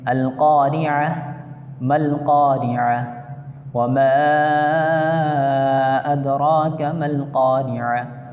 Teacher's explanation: آگے گولتا ہے، گولتا کے آگے آیت ہے. جب گولتا پہ وقف کیا جاتا ہے تو گولتا نہیں پڑھیں گے، اس کو ساکن کر دیں گے اور گولتا کو وقف کی حالت میں ہا ساکن سے بدل کے پڑھتے ہیں